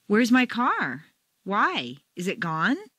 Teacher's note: as your feelings rise in an emotional situation your intonation Rises up along with them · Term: emotional or rhetorical question intonation